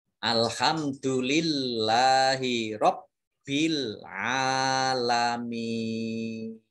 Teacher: Mat arid lis sukun itu dibaca panjang boleh 2, boleh 4, dan juga boleh 6 harokat